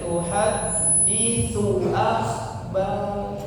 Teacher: tuhaditsu langsung disambung pendek